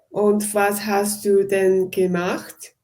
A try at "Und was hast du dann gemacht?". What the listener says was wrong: Be careful, it's not then, but done.